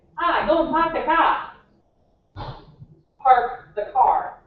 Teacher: in the east supposedly they don't pronounce their Rs